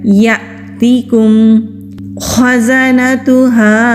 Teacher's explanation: आवाज को क्लियर करेंगे फिर या पर जाएंगे हमजा साकिन है हमजा साकिन हो तो झटके और सख्ती के साथ पढ़ा जाता है